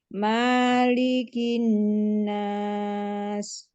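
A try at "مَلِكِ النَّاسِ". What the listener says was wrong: Manya pendek Bu. Lamnya kepanjangan Bu. Cukup satu ayunan aja.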